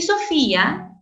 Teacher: Y Sofía tienes secuencia de cerrada I más una abierta A con acento en la cerrada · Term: hiato acentual